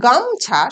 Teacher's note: ম এর পর আর আমরা ও উচ্চারণ করছি না। অর্থাৎ এখানে কোন স্বরধ্বনি নেই।